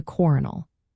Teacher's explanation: the L sound in colonel shifted to an R sound, turning it into coronal. When English speakers borrowed the word in the 1500s, they first used the French spelling coronal an pronounced it as coronal with the R sound. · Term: dissimilation